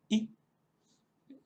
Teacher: La siguiente vocal es la I, una I corta, I. Eso sí, más o menos igual que una I española, pero procurando no alargarla demasiado.